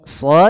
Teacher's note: sa tebalkan karena dia huruf isti'la, ya teman-teman. Jadi suaranya harus tebal.